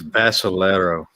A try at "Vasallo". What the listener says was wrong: There's no E or R in between. Vasallo. It could be Vasallo or Vasallo.